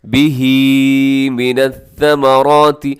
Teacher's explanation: ثمرات میں کیا ہے، سیٹی نہیں ہے اور را کو موٹا پڑے گا